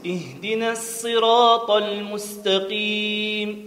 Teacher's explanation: في كل القرآن لفظ الصراط وصراط المعرفة بأل والمنكرة، الإمام قنبل عن ابن كثير يقرأها بالسين خالصة، نقرأ له بالسين.